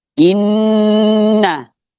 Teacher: Kemudian inna ini namanya gunna musyayyadah. Nun bertasydid didengunkan sampai dua ketukan. · nun bertasydid. didengunkan sampai 2 ketukan. Inna. Nah, kemudian syai ini bertasydid, penekanannya besar gitu.